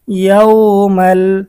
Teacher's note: তানবিনের পরে এখানে ঈদগামে বেলাগুন্নার হরফ লাম এসেছে, গুন্নাহ ছাড়া মিলিয়ে পড়তে হবে।